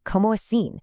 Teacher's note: You start strong with co, you kind of glide through mo a, and then you finish with this really great nasal sound, assim.